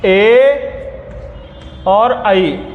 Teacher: अब आएगा कंठ प्लस तालु, गले से आवाज निकलेगी और जीभ तालु में छुएगी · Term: कंठ तालव्य